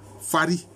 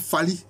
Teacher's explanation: Bon, vous savez qu'on a dit Fari, mais on peut comprendre que le R est ici allophone du L. On aurait pu dire Fali, mais ici on dit Fari.